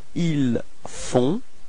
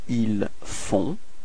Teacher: you've got this nasal on, on. Okay, and then the final T is not pronounced.